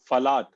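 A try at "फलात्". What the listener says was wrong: Falat. Ma'am, PHA, Falat, not FALA. Phalam, phalat, vanam, vanat.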